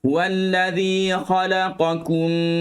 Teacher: Huwallazi khalaqakum, huwallazi, keluarkan lidah, zi, kha. Buka mulut sikit untuk dapatkan makhraj huruf kha kerana dia berada di dalam.